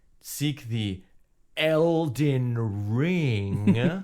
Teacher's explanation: she kind of has a soft voice a little bit breathy